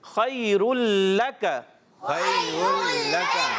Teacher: را تنوین کے بعد لام آنے کی وجہ سے یہاں پر ادغام کا قاعدہ ہوگا, بغیر غننے کے ادغام کریں گے.